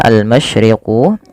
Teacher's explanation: alif lam qamariyah dibaca jelas suara lamnya